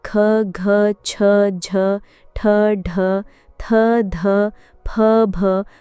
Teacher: ख घ और ठ महाप्राण व्यंजन हैं। महाप्राण व्यंजन वे होते हैं जिनके उच्चारण में मुख से अधिक हवा निकलती है